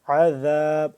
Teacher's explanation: عین کو حلق کے درمیانی حصے سے کھچاؤ پیدا کریں گے تو ہوگا تھوڑا سا کھینچ کے پڑھیں گے ٹھیک ہے عین